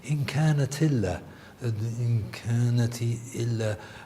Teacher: what happens in Warsh is that you basically lose the hamza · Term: naql al-hams